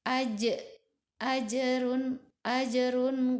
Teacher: huruf Jim di mati termasuk huruf Qalqalah maka harus di pantulkan